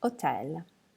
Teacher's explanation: H is special because it's never pronounced in Italian. So hotel becomes hotel.